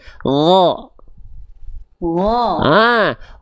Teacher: Huruf ghain itu sama kayak huruf kho, Bunda, tapi nggak pakai nafas.